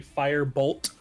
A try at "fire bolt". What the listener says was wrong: Because you didn't pronounce the T.